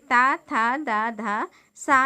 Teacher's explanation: अब हम देखते हैं दंत व्यंजन, तो जहाँ पर दांतों की नोक ऊपरी दांतों को, मतलब हमारी जो जीवा है वो दांतों की ऊपरी सतह को स्पर्श करती है, वे दंत व्यंजन कहलाते हैं।